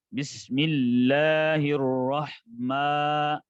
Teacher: بسم اللہ میں بسم اللہ یعنی آواز کھڑی زبر آ رہی ہے لفظ اللہ پر, تو اس کی آواز جو ہے منہ کے خالی حصہ سے ادا ہوتی ہے. حروف مدہ کا مخرج ہوتا ہے جوف فم, جوف دان اسے کہتے ہیں.